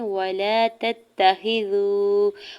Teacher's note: واو ساکن سے پہلے زال کے اوپر پیش ہے، واو مدہ ہو رہا ہے اور واو ساکن کے اوپر مد منفصل بھی ہے، تو 4 سے 5 حرکت کھینچ کے ادا کریں گے۔